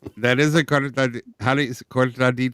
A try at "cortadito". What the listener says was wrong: No, not with an L. Cortado. With a D.